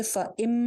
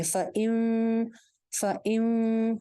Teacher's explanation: میم ساکن والا چھوٹی میم والا جو غنہ ہوتا ہے نا، اس میں ہونٹوں کو بہت ٹائٹلی آپس میں نہیں جوائن کرتے ، یعنی کہ فَإِم نہیں کریں گے، فَإِم فَإِم، ہلکی سے